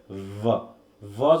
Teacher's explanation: ভ ভ যখন হচ্ছে তখন ঠোঁটটাকে দাঁতের সাথে লাগিয়ে একটা কম্পন জাতীয় সাউন্ড তৈরি করছি